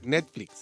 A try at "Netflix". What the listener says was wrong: Net. Netflix, en Netflix. No. Es T, no es C.